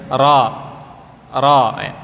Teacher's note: getarannya huruf ro tidak terlalu banyak jadi getarannya hanya satu dua kemudian yang ketiga disamarkan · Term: huruf ra